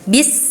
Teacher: ketika sukun sin itu mempunyai sifat rakhawah, artinya mengalir.